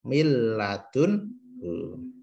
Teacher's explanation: Atau min ladunhu tidak boleh, harus masuk ke lam karena idgham bila gunnah